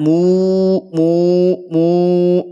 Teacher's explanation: ada domah ketemu dengan wau mu panjang empat atau lima harakat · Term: Mad Arid lisukun